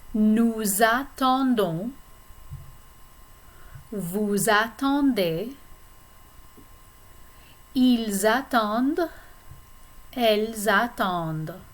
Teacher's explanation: including a liaison between the S and the vowel sound A in attendre